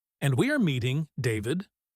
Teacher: By putting her voice up at the end of the sentence, she turns it into a question.